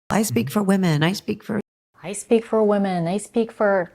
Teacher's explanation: she changes her voice to indicate that she is imitating an imaginary person who would say that. Her pitch is slightly higher. I speak for women.